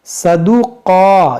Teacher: یہ قاف کو کھینچیں گے اور موٹا کریں گے